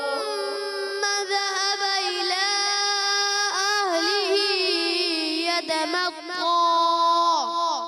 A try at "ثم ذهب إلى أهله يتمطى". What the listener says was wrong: اہلی ہی کو زیادہ نہیں کرنا، الہ کی مد کو کھینچنا ہے. ٹھیک ہے.